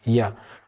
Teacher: य का उच्चारण य बोल के देखिए, आपका जीभ ऊपर तालु के साथ मिल रहा है